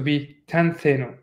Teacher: So it became tentheno. So the focus is on the theno rather than the te. Not focus, the stress is the more proper word to say.